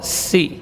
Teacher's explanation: Ujung lidah di ujung gigi seri bawah, sementara gigi seri atas dan bawahnya rapat. Sin huruf safir sughra, si hamas dan rakhawah, ya.